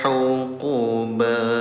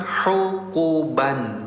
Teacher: Karena kita berhenti di sini, bunyi tanwinnya jadi panjang 2 harokat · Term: mad iwad